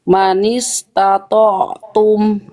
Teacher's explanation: Jadi ain nggak boleh putus bunyinya. Diantar bunyi ke bunyi tumnya, bunyi ini ain diantar, jangan putus. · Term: ain sukun